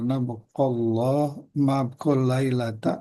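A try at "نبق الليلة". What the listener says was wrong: Bukan nabaqallah, nabaqal lailah langsung. Nggak ada Allahnya.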